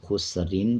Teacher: آگے دیکھیں، خسرین، جب وقف نہیں کریں گے، آیت پہ رکیں گے نہیں، خسرین پڑھا جائے گا اور را کو باریک پڑھا جائے گا۔ جب وقف کریں گے تو را کو پر پڑھیں گے۔